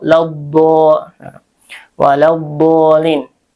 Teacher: dibaca idgam ya dari lam langsung ke d